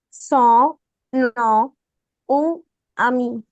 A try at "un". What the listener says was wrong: Okay, not un. Okay, so it's going to be nasal U, un. Son, nom, un, ami.